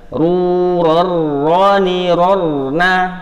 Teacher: kalau tanwin ketemu ro nggak bisa didengungkan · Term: idgham bila gunnah